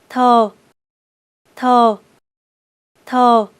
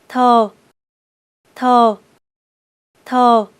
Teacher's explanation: Place your tongue on your upper teeth, then flick it outward to make the sound.